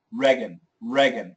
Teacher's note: most Americans actually say rean rean with a short e